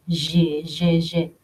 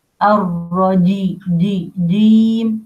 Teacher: الجيم, middle of the tongue, with what lies opposite it from the roof of the mouth, and الجيم contains a characteristic called al-jahr or audible. That means no breath outside your mouth comes.